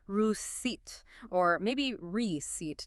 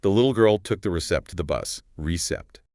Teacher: mispronounced receipt as recept, adding a P sound that isn't actually there. The key here is that the P in receipt, R-E-C-E-I-P-T, is completely silent, always.